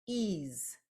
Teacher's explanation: I have the EA coming together as we know it does to make a long e sound and then I have a z sound that is coming from an S